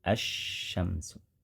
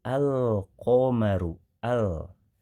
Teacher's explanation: pembahasan alif lam qamariyah, lamnya terdengar jelas, al-babu. Kalau pada kata asyamsu, bunyi lamnya tidak terdengar karena sudah dimasukkan, digabungkan ke huruf yang ada di depannya, asyamsu. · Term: alif lam syamsiyah